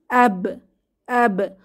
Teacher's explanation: অ্যাব অ্যাব কলকলা সহ বের হবে, কলকলা বা প্রতিধ্বনি